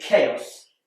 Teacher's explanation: CH is more commonly pronounced CH like in church but in chaos it's a c like in cat